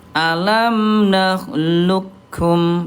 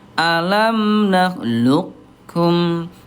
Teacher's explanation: Jadi menebalkan qaf dulu baru ke kaf.